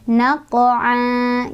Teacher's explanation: Maka cara bacanya fathah tanwinnya diganti menjadi fathah dan dibaca panjang 2 harokat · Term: mad iwad